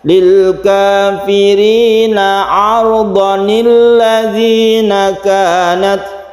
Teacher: fathah atau panjangnya ini tidak berlaku lagi mat iwatnya, sehingga kita baca pendek apabila kita meneruskan.